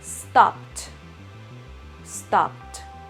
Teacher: Si pronuncio stop, ese último sonido es P, entonces esa ed en pasado se vuelve una T. Entonces yo digo stopped, stopped.